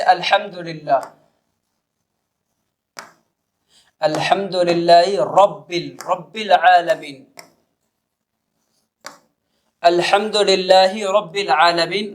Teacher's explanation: را پڑھ رہے ہیں تو زبان کا سرہ، زبان کی نوک اوپر سے لگ رہی ہے